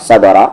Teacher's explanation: با پہ قلقلہ کریں گے اور را کو ہیوی کر کے پڑھیں گے